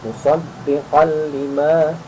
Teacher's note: Musaddiqal langsung masuk, tanwin bertemu lam tanpa dengung